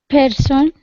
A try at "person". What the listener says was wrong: Person. Person. Person. Yeah, because you said person. It's kind of interesting because that's more of an Indian accent. So the Indians don't always aspirate their P's.